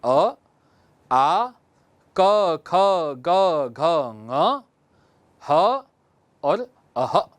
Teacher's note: कंठ से उच्चारण होने वाले वर्ण है अ, आ, क, ख, ग, घ, ङ, ह और अह। इनका उच्चारण हम कंठ से करते हैं, या सामान्य भाषा में कहें तो अ, आ, क वर्ग के 5 अक्षर क, ख, ग, घ, ङ और ह और अह की उच्चारण स्थान हम कंठ से करते हैं।